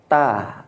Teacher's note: ujung lidah berjumpa dengan pangkal tumbuh gigi seri atas ta gitu maka perlu kita perhatikan dan perlu kita ketahui dari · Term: huruf ta